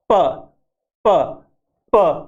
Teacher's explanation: जैसे हम इसको बोलेंगे प प प, प्लोसिव, प्लोसिव यानी एकदम विस्फोट से आवाज बाहर निकलती है